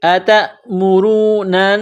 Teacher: نون کے اوپر تشدید ہے تو آواز ناک میں چھپائیں گے، غنہ کریں گے یہاں پر۔ نون نون زبر نن، نون الف زبر نا، اتأمرون سین، سین میں سیٹی کی آواز پیدا کرنا ہے، سین کو باریک کرنا ہے۔